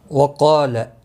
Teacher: قاف مستعلیہ ہے، پر پڑھا جائے گا، اس کے ساتھ الف بھی ہے آیا ہے، یہ بھی پر پڑھا جائے گا، لا کو کھینچنا نہیں ہو۔